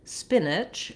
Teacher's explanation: we have first syllable stress. So my spin syllable is held longer and my ich syllable is held shorter and has a reduced vowel. The spin is just like the word spin.